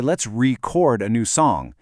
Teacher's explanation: the stress just slides over to that second part, the chord. And now it's a verb, it's an action. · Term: syllable stress